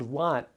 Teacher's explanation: The word lot ends with the T sound, which is voiceless.